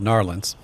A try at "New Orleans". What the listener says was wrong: No, it's called There's no R there. It's Nolans.